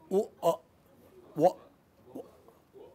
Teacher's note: Ya is a diphthong from the front of the mouth, and wa is a diphthong from the back of the mouth. · That is ya. And wa, u and a quickly together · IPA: /w/